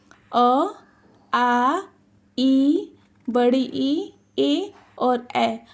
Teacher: हमारे मुंह में कोई गोलाकार नहीं बन रहा है। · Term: अवृत्तमुखी